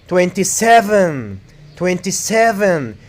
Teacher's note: you have to put the stress on seven